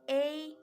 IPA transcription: eɪ